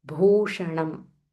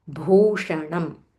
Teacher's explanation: Mahaprana Bha and it is Dirgha. Then followed by Murdanya Sha.